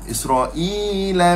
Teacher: Syibhul badal baca berapa harakat? Dua harakat sahaja.